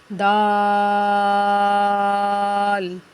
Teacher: زبان کا کنارہ سامنے والے دانتوں کی جڑ کے ساتھ لگے اندر، یعنی جو جڑ جہاں سے مسوڑوں کے ساتھ لگے تو دال اور تا ادا ہوتا ہے